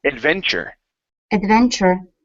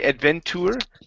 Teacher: when we pronounce that Tu it changes into a CH sound